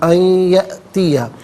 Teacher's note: اور یہ یہاں پر جو یرملون کا قاعدہ ہے وہ اپلائی کیا جائے گا. یأتیہ میں یا میں آپ دیکھیں حمزہ ساکن ہے، اسے جھٹکے کے ساتھ ادا کیا جائے گا